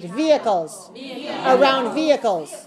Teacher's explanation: Don't pronounce the H, silent H